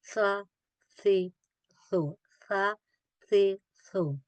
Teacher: pronounce on the tip of the tongue touching the inner edge of the two front teeth, like sa. Don't do the whistle.